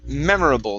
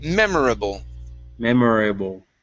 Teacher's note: good uh next is uh the word memorable right here memorable the stress is at the beginning